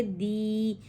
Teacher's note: یا ساکن اس سے پہلے زیر، ایسی یا مدہ کہلاتی ہے۔ یا مدہ کو حرکتین مقدار کھینچ کے پڑھیں گے